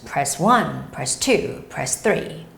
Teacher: notice how I emphasize the numbers